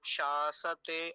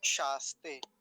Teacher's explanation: पहला तालव्य है, दूसरा दंत्य है। तालव्य जो है वो पूरा है, दंत्य सकार जो है वो आधा है।